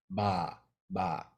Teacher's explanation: mouth nope I don't feel much of a puff ba ba in ba the air is caught by the vocal cords and starts vibrating before your lips open up and so there's no chance for that puffevera to come out